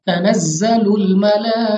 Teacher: अब यहाँ पे हमारे पास खड़ी जबर है, लेकिन खड़ी जबर के अलावा हमारे पास लाम पर मद है, तो हमने इसको 4 से 5 अलिफ तक खींच कर पढ़ना है, लंबा करके पढ़ना है।